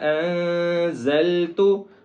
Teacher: زا کے اوپر زور دیں گے، سیٹی کی آواز نکالیں گے